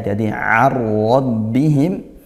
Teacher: Kemudian arad bihim pakai ain ya, jadi arad bihim, nun sukun bertemu ra idgham bila gunnah, masuk tanpa disertai dengung